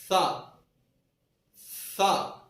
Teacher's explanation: सा का मखर जबान की नोक और ऊपर के दांतों के अंदरूनी किनारा